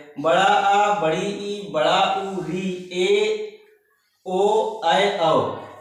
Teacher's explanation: बड़ा आ बड़ी ई बड़ा उ ऋ ए ओ ऐ औ ये जो स्वर है इनके उच्चारण में दो मात्रा का समय लगता है